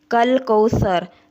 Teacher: انا اعطینا، نون کو 1 الف کے برابر لمبا کرنا ہے، اس کے اوپر کھڑی زبر ہے۔ کل کوثر، سا کو نرم طریقے سے ادا کرنا ہے، جب زبان کی نوک کو دونوں دانتوں کے درمیان رکھیں گے تو ہمارا سا ادا ہوگا اور وا کو پر کرنا ہے یعنی موٹا کرنا ہے۔